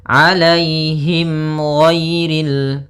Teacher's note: mim mati bertemu dengan huruf ghain, maka dinamakan dengan izhar syafawi. Maka harus jelas suara mimnya